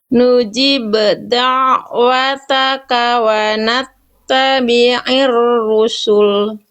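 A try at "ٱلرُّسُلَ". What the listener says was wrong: Oke, rusul, sinnya tipiskan dan lamnya tipiskan. Rusul, jangan rusul, itu lamnya jadi tebel. Lam itu kan huruf tipis. Lam itu termasuk ke dalam huruf yang tipis. Jadi ketika dibaca, jangan dibaca wa nattabi'ir rusul. Nah itu lamnya jadi tebel.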